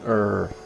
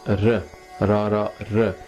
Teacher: Now rara, it looks just like, you might think it's the same as the English R, but it's not, because R, the tongue is up a little bit and you're going R, but this is R, rara R. The tongue is much more forward, and it doesn't roll as much like the French might, but it's still an R.